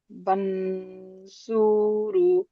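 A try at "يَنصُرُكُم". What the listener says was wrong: বানসুরু কেন হবে? এটা ইয়া। ইয়ানসুরুকুম।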